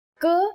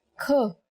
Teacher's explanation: K is a consonant, and when we say it with aspiration, it becomes another consonant, Kh.